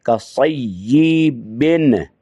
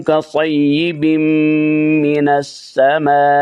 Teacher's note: نون کو میم میں ادغام کرنا ہے